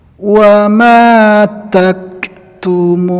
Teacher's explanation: Ta juga punya sifat hamas, dalam pengucapan hurufnya ada keluar angin sedikit.